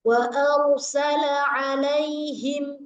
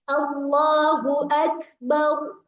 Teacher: Saat mengucapkan huruf ora, ya, itu apa? Lidahnya bergetar, tapi getarnya sekali. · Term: takrir